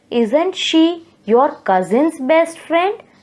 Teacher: So the tone has risen up. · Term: rising tone